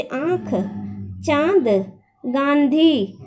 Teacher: इसका उच्चारण नाक और गले दोनों से होता है। अनुनासिक यानी चंद्रबिंदु होता है, जिसका उच्चारण जो है नाक से, यानी हमारी जो प्राणवायु होती है नाक से भी निकलती है और गले से भी, यानी कंठ से भी निकलती है।